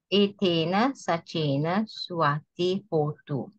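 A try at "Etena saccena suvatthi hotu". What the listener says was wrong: Okay, great.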